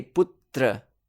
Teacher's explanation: Like, for example, putra. When we chant, we say putra. It sounds as if there are two t sounds.